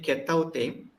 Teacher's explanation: if you say Ketautem, so then we make sure that shua is there